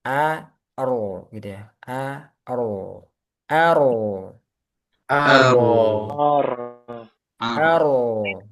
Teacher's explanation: ro tebal karena sebelumnya fathah · mulai tebalnya jangan dari a-nya tapi di ro sukunnya